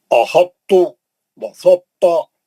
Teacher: ان کی ادائی میں تا کا اطباق مانے تا کا موٹا پن باقی رکھ کر ادغام کیا جاتا ہے